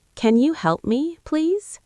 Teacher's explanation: Make your voice go up at the end like a question.